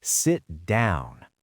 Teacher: The pitch drops on down. It is authoritative. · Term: falling intonation